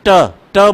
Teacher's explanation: दांत से ठीक ऊपर का जो कठोर भाग है यह मुर्दा है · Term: मूर्धन्य